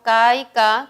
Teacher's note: que son oclusivas sordas